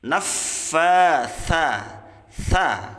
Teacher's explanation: Sa-nya ujung lidahnya menyentuh ujung gigi seri atas. Naffatsa, sa, keluarkan udara ya, mengalirkan nafas ya.